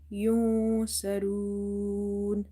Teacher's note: In the word yunsarun, you see after noon sakin, this is letter swad, which is from the ikhfa letters, so you have to hide this noon sound. Swad is heavy, ra is heavy.